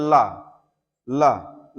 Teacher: जैसे ला ला बोल रहे हैं तो इसमें से ला बोलते समय हवा जो है वह पार्श्व भाग से बगल से निकल जा रही है। तो ये है पार्श्विक व्यंजन।